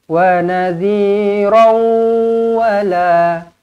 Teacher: Kalau sambung dia akan jadi idgham ma'al gunnah, muncungkan bibir dekat sini.